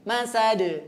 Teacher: Jangan terburu-buru, dipanjangkan terlebih dahulu, kemudian didengungkan ke hidung ya. Masad ya, di terakhir pada kata dalnya ada qalqalah dan qalqalahnya nyambung ya, pantulannya menyambung. Masad.